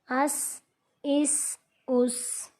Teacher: سین ہے، سیٹی کی آواز آنی چاہیے۔ حمزہ سین زبر اس، حمزہ سین زیر اس، حمزہ سین پیش اس، اس اس اس۔